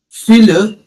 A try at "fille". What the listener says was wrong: No, no, no. The L sound won't come. The consonant sound is silent with the E rolling a bit.